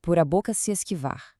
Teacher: A sílaba mais forte, a tônica, é var. Como a regra manda parar na última tônica, a contagem fica por a boca se esquivar.